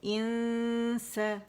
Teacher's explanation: جب اس آپ پڑھیں گے تو رائٹ اوے غنہ کرتے ہوئے سین کے مخرج کے قریب جائیں گے، نون کو چھپاتے ہوئے، ٹھیک ہے. تو آپ نے 2 کاؤنٹ کا غنہ کرنا ہے اور اس کے بعد سین کو آپ نے فرملی ادا کرنا ہے